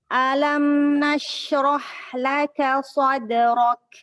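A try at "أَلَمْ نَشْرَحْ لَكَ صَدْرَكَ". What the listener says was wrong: alam, lamnya sempurnakan fathahnya. Tempo fathahnya.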